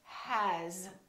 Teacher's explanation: It's spelled with an S, but the sound is actually Z, has.